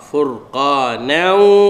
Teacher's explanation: idgham ma'al ghunnah, tanwin bertemu dengan waw. Waw salah satu daripada huruf idgham ma'al ghunnah yang empat.